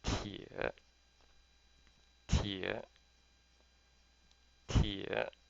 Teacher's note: So you're familiar with pronouncing jie, so just replace the J with a T. Tie, and it's third tone, so we have to kind of do the falling and rising.